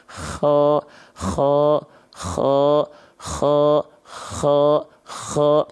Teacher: k nah jangan sampai terlalu berlebihan ya Ko enggak gitu ya tapi cukup ko tuh lembut aja tapi tetap ada keluar dari ujung tenggorokan · dari sini dia kalau teman-teman tepat melafalkannya dari sini dia akan mengeluarkan Salah satu sifat yang disebut dengan hams mengalir nafas tapi karakteristiknya dengkuran atau seperti ngorok tapi ngorok di sini bukan ngorok yang yang lebai ngorok yang